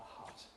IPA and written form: hʌt (hut)